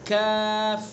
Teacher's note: زبان کی جڑ سے کچھ اوپر کا حصہ اور اس کے مقابل اوپر کا تالو